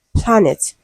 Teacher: planet as a root word is stressed on the first syllable